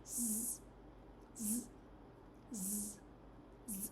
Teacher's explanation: So your mouth slightly open, tongue close to the roof of the mouth. Similar to s, but it is voiced. You can feel the buzzing when you're saying it.